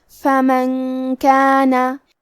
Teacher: کلمت فمن کے آخری میں نون ساکن ہے، پھر حرف الکاف ہے کلمت کانا، کاف حروف الاخفاء میں سے ہے لہذا ہمیں یہ حکم کو غنہ کے ساتھ ادا کرنا ہے